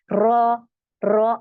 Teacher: ये जो हमारी जबान की आगे का टिप ऑफ द टंग है ये बैंड हो रही है मुड़ रही है